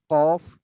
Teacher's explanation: জিহ্বার গোড়া উপরে বরাবর লাগবে, কফ। আর তার একটু কফ সামনে কাফ লাগবে, কাফ কফ কাফ।